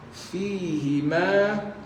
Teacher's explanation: bibir bawah masuk gigi atas